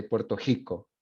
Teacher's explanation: So the double R becomes a h sound.